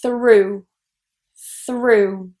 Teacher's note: this is a voiceless TH. So what we need to do here is put our tongue in between our teeth